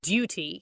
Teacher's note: >> Yeah, well, and I can hear like the word duty, you know, a British person would say duty. You know, there's a Y in there.